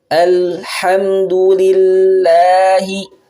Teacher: Awas, pada pengucapan du ini hanya satu harokat.